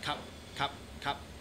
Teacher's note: it's really really hard to actually hear the the P yeah in cop